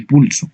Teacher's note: La letra P representa un fonema oclusivo labial sordo de pulso.